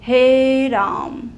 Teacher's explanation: ये जो हे को हमने बोला है लंबा खींच के, तिगुना समय लगाया है उच्चारण में, और यहाँ पे जो संकेत हमने बनाए हैं ये संकेत चिन्ह ही क्या कहलाते हैं, प्लूत स्वर कहलाते हैं।